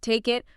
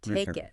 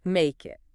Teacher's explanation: Feel that K sound starting the word it. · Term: linked